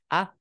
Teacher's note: udaranya sih benar ngalir Cuma tidak ada desis